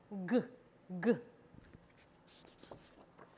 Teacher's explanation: So how you make this sound is it's a lot like that K sound that we said, or that C sound that we produced earlier. The tongue goes to the back of the mouth. The back of the tongue goes up and towards the velum, toward the soft palate there. G, G. And your vocal folds are turned on.